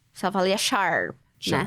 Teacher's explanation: Então, acho que eu diria o R, né? Então, é retroflexo como americano.